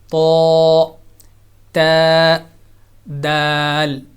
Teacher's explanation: دانتوں کی جڑ اوپر والے سامنے والے اوپر والے دانتوں کی جڑ میں زبان کی نوک لگائیں گے تو وہیں سے یہ تینوں لیٹرز، تینوں حروف ادا ہوں گے